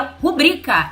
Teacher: A sílaba tônica, a sílaba forte, é o bri, nunca foi o ru. Então seria rubrica e não rúbrica.